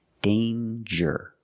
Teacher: there's no nasal sound there's no um it's a regular n